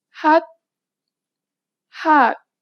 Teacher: This letter usually makes a 'h' sound. In the batchim position, you need to read it as 't'.